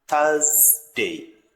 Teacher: Thursday in British pronunciation R is silent and put your tongue in between your teeth to make the sound